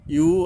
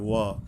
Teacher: হামজাটা যে হলকের গোড়ার থেকে আসে, আর ওয়া তো দুই ঠোঁটের মাঝখান থেকে হালকাভাবে হবে